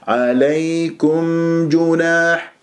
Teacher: لازم اسمع صوت الميم المظهره